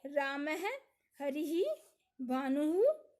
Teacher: स्वर के बाद या आगे आने वाले दो बिंदुओं को विसर्ग कहा जाता है। विसर्ग का उच्चारण अर्ध है की तरह होता है।